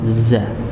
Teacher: jadi ujung lidah bertemu dengan gusi bagian bawah